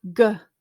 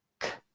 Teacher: Your mouth is not moving to change between those 2 sounds. It's whether or not you're using your vocal cords or not.